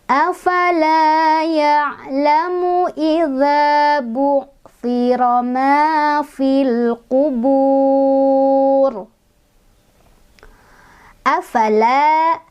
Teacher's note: Afala ya'lamu idza ma fil qubur. Afala, la ada mad tabi'i, karena ada fathah ketemu alif, dibacanya panjang 2 harokat